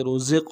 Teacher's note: را کو موٹا کریں گے، زا کو قاف کے ساتھ ملائیں گے، قلقلہ ہے، قلقلہ کریں گے